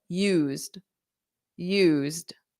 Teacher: I have used which has a very soft D at at the end and is one syllable